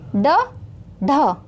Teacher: जीभ ऊपर लगी ना, और ऊपर कहाँ? अगले भाग पर लगी। तो यही होते हैं हमारे मूर्धन्य व्यंजन।